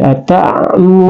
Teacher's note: karena ada doma, ra-nya doma, kemudian ada waw sukun di depannya, maka dipanjangkan dua harakat, ya. Nah, juga na di sini adalah dia adalah tarful lisan, keluar di ujung lidah, nun, ya, ya, ya, jadi ata'muruna, ya. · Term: mad tabi'ah